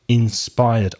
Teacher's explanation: if it finishes with the R sound, you don't pronounce the ED, just the D.